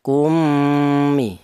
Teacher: mim yang awal dimasukkan ke huruf mim yang nomor 2 sehingga menjadi satu huruf yang bertasdid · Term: idgham misli